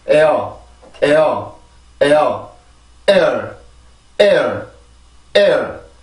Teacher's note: 이 발음은 두 개의 음절이 아니라 하나의 모음이죠. 1음절이에요. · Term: 이중모음